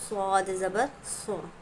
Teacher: صاد پر تشدید ہے، اور صاد کا مخرج سو، منہ بھر کر نکالیں گے، س نہیں پڑھا جائے گا